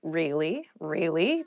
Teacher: Really is a very useful word because you can use it to show you are interested in a conversation with upward intonation